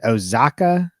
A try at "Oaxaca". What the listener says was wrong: Dude, so yeah, when you look at that freaking state's name, it looks like it's pronounced completely different than how it's spelled. So it's more of a wa, so it's Oaxaca. Even though it starts with an O, but yeah, Oaxaca.